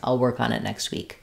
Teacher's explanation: stress and be long on week and be fast on I'll work on it next week